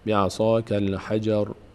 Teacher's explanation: اگه وقف بشه دیگه حجرا نمیشه، میشه حجر